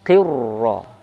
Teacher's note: takrir ro-nya, getaran bunyi ro-nya jangan sampai jelas, harus samar